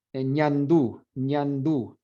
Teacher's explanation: You'll feel the air coming out your nose, your nasal cavity. So what happens there is your velo goes down a bit, kind of blocks some of the air from going out of your mouth.